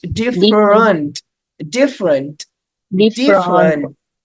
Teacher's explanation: We've got two E letters here, and they're both schwa sounds.